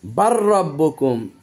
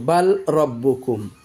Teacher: সাকিন আর দ্বিতীয়টি মুতাহাররেক মানে হারকত যুক্ত এজন্য করে দিতে হবে লামকে রত ঢুকায় দিতে হবে